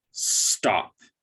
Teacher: there's no vowel sound between the S and the T, so it's not stop, but it's also, there is no vowel sound before the S, so it is not S-stop, it's just stop. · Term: consonant blend